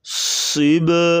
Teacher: قلقلہ کریں گے اور صاد کو موٹا کریں گے